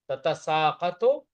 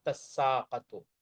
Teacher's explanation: دوسری تا کو سین سے بدل دیا، سین کا سین میں ادغام کر دیا